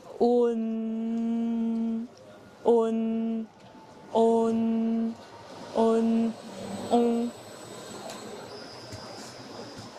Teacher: Pour prononcer on, commencez par dire O, puis ajoutez le son N en l'allongeant et en le fredonnant. Essayez de répéter cela en raccourcissant le son petit à petit. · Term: voyelle nasale